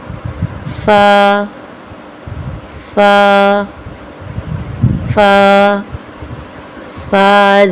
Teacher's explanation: جب نیچے کے ہونٹ کے تری والے حصے سے لگے تو فا ادا ہوتا ہے